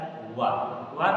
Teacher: दांत और ओठ की सहायता से उच्चारित होता है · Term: दंत ओष्ठ